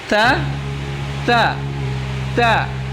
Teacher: keluar dari ujung lidah dan menempel pada pangkal dua gigi seri atas. Nah, pada pangkal dua gigi seri atas, ya.